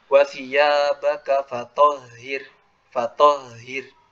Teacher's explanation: jadi nafasnya dialirkan karena huruf H itu kan dari tenggorokan yang paling dalam